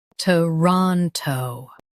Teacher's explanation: Stress ron and keep t and toe light.